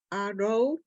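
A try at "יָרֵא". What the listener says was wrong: No, don't forget the ya.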